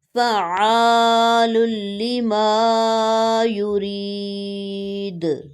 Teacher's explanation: عین مشدد ہے، اس پر زور دیں گے اور عین کی وائس کلیئر ہونی چاہیے۔ فعال لما یرید، جیسے ہی دال ساکن ہوئی اس پہ قلقلہ کیا جائے گا۔